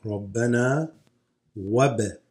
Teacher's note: Why wab? Because the ba slightly is shaken or doubled, just slightly, not full doubled, called qalqala · This hamza drops. You go straight to the ba. The ba has a sukoon, no movement, right?